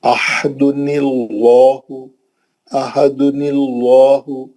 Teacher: نون پہ جو زیر دیتے اس کو عارضی زیر رہتا ہو، پرماننٹ زیر نہیں ہے، وہ پکا زیر نہیں ہے، وہ اوریجنل زیر نہیں ہے، وہ اصلی زیر نہیں ہے، وہ عارضی زیر ہے. عارضی زیر لام کو پتلا نہیں کر سکتا، لام جلالہ موٹا رہیں گا، کیوں، وہ جو زیر ہے عارضی ہے.